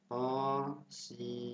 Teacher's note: Ada ayat di awal surah yang berbunyi Bismillahirrahmanirrahim, ta sama sin. Ingat, mad lazim mukhaffaf harfi itu kita baca 2 harokat